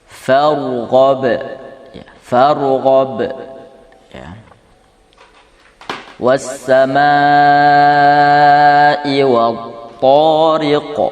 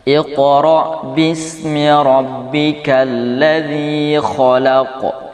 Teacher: Memang jelas dia terhenti dulu, baru kemudian qalqalahnya muncul. Dengan kata lain, agak ada jeda sedikit. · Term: qalqalah mutawassithah